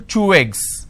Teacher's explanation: So I'm using way sound in between these 2 eggs. · one ending with vowel sound, another one starting with a vowel sound, you can combine or link these 2 sounds together. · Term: linking